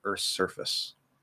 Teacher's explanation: when we have a th going into an s like this you can actually drop the th earth's surface so there's no th there easy um breadth okay